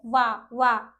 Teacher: हमारे जो ओठ हैं वह हमारे दांत को टच करते हैं। जो हमारा जो हमारे दांत होते हैं वो ओठ को छूते हैं। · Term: दंतोष्ठ